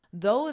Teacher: notice the pronunciation of though it has the voiced th